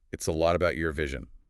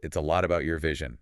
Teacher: emphasis here is on lot and vision